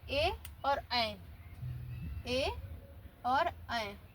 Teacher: यह कंठ तालु से बोले जाते हैं। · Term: कंठ तालव्य स्वर